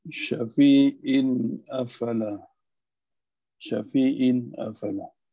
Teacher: kena jelaskan tanwin yang ada pada syafi'in tu sebab dia bertemu dengan huruf hamzah · Izhar di sini tidak dengung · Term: Izhar halqi, izhar halqi